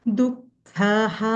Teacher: துக்க வந்து செகண்ட் க மகாபிராண தொண்டையிலிருந்து வரணும்